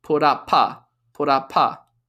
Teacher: Because we have a vowel, U, up. Again, up ends in a P consonant, and therefore it links to a.